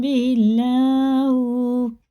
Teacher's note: اللہ کا لام زیر سے باریک پڑھیں گے